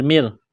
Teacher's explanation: میم مشدد ہے، غنہ کریں گے، آواز ناک میں چھپائیں گے